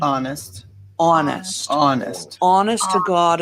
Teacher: back vowel so it's placed in the back of the mouth what bostonians do specifically Southie is they treat this vowel as what we call a diphthong